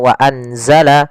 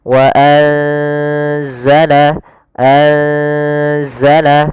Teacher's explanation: Maka cara membacanya itu kita samarkan nunnya kepada huruf zai. Bukan dibaca wa anzala, tapi juga bukan nggak bisa dimasukkan ke za wazzala, tidak bisa. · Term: ikhfa